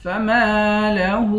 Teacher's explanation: الف حروف مدہ ہے، اس کو ایک الف کی مقدار کھینچ کر پڑھتے ہیں۔ ہاں پر الٹا پیش ہے، اس کو بھی ایک الف کی مقدار کھینچ کر پڑھتے ہیں۔